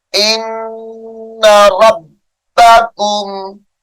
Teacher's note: نون مشدد کی وجہ سے غنہ ہے